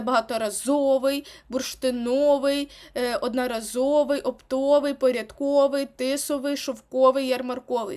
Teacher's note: маємо прикметники які мають наголос на ов